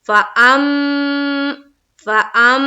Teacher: تھوڑی دیر آواز کو ناک میں روکیں گے۔ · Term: میم مشدد کا غنہ